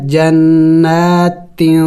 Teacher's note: تنوین پر اور نون ساکن پر ہمیشہ اخفا کیا جاتا ہے. اخفا کہتے ہیں ناک میں آواز چھپانا